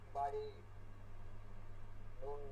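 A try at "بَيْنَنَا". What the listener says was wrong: নাতে টান দিতেছেন কেন? না কি মাদে হরকত নাকি? বাইনা বাইনা বাইনা। জি, টান দিলেই কিন্তু একটা মাদ হয়ে যাবে।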